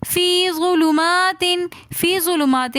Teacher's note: فی ظلمات میں یہ مدہ ہے تو اس لیے ہم فی تھوڑا سا کھینچ کر پڑھیں گے